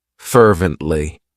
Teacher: It has 3 syllables, and the stress is on that first syllable.